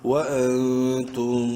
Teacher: نون ساکن کے بعد تا حلقی میں سے نہیں ہے، اخفا ہوگا یہاں پر بھی